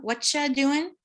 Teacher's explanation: TY makes a ch sound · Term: assimilations of D and Y